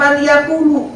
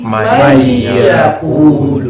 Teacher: Nah, apabila bapak-bapak ngaji Quran ketemu nun mati atau tanwin ketemu keluarganya si idgham biguna, maka enggak usah dibaca si tanwinnya ini. Si nun matinya atau tanwinnya enggak usah dibaca. Langsung dimasukkan. Nah, dimasukkan ke huruf idghamnya, yaitu di situ ada huruf ya.